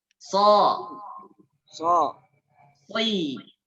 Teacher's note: Berarti dia sangat tebal. Ketika kasroh pun shadnya terdengar tebal. Maka suaranya bukan si. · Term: huruf shad